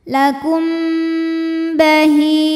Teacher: Kemudian di sini ada hukum ikhfa syafawi karena mim sukun menghadapi huruf ba. Maka bunyi mimnya ditahan dulu, didengungkan dulu.